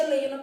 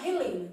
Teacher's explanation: então no português o h não é pronunciado